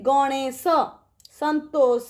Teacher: तालव्य स केमती हेची ना जिह्वार अग्रभाग तालु रे स्पर्श करूची।